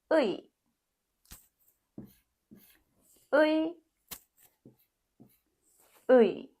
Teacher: It's U and E together. When you say quickly, Ui.